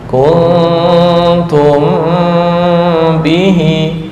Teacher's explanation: Mim bertemu ba, dengungnya ditahan.